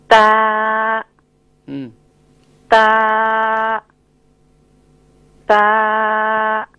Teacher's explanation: تا کا جو مخرج ہے وہ زبان کی نوک ثنایا علیہ کی جڑ پر لگ رہی ہے